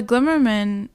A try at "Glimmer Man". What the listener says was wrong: Because you're saying Glimmer Man as is his last name. Glimmer Man, not Glimmer Man. The Glimmer Man. You say Spider-Man?